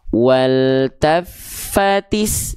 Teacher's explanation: Cara membacanya bentuk seperti alif lamnya dikip aja langsung masuk ke yang ada tanda huruf yang ada tanda syamsiyah atau tasydidnya sebagai penanda alif lam syamsiyah. Maka ketika kita baca langsung idghamkan ya dileburkan ke huruf sinnya karena dia ada tanda syamsiyah atau tasydidnya. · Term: idgham syamsi